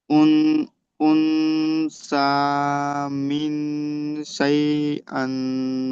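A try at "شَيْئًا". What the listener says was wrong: আন নয়, আন নয়, হামজার নিচে দুজের আছে, দেখেন এখানে হামজা আছে তার নিচে দুজের, তাহলে হামজা দুজের ইন।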